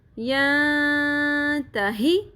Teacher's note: یہاں پہ نون ساکن کی آواز پہ اخفا مع الغنہ ہوگا کیونکہ آگے حروف اخفا آ رہا ہے